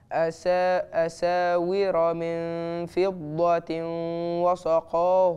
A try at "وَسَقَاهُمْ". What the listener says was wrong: وسا مش وصا.